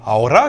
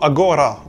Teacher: certains mots conservent la prononciation qu'ils avaient en vieux castillan par exemple aora qui veut dire maintenant en espagnol se dira en judesmo Agora où le G est maintenu